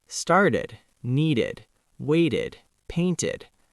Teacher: because start ends with a t, we add an extra syllable to make it easy to say.